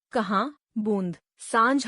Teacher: इसका उच्चारण करते समय वायु नाक और मुह दो से निकलती है इसलिए इसे अनुनासिक भी कहते हैं इसका प्रयोग री को छोड़कर